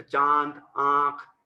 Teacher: मुंह और नाक दोनों से होता है, और इसे चंद्र बिंदी के रूप में प्रयोग में लाया जाता है। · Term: अनुनासिक